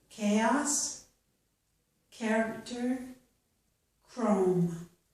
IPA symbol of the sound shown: k